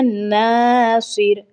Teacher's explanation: नून ज़बर अलिफ ना, ठीक है, हमने एक अलिफ के बराबर खींचना है, नासिर नहीं बस करना, नासिर, ठीक है, ऐसे पढ़ना है।